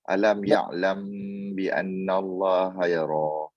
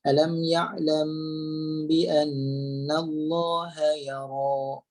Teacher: kita akan tekan mim ni pada bibir, ditolak sampai hidung sehinggalah keluar bunyi dengung dengan kadar 2 harakat.